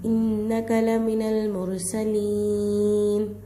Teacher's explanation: सीन का आवाज़ ले लेकर आना है, यहाँ स्वात नहीं निकल जाए, मद्दा है थोड़ा खींच कर ठहराना है।